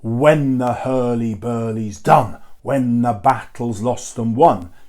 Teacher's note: here the witches speak not in iambic pentameter but in trochaic tetrameter · the stress happens on the first syllable of each pair